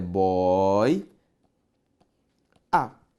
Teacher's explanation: em boia eu tenho ditongo aberto Oi